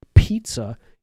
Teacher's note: when you see words like podcast and pizza and things like that, that extra air comes out of your mouth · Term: plosive